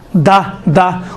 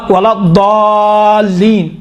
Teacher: دال اور ضاد میں فرق ہے، دال تھوڑا سا باریک ہے، ضاد اسی دال کو تھوڑا غلیظ بناؤ، موٹا بناؤ تو ضاد بن جاتا ہے۔